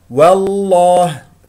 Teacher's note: فخم اسم الجلال الله لانه قبله مفتوح